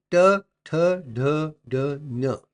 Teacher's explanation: produced with the help with the tip of the tongue curled back towards the hard pallet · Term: retroflex